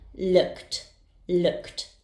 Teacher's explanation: Its sound ends in k. The ed ending will be pronounced as t.